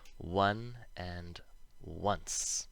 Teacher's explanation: these are special because they have an invisible but audible w sound in front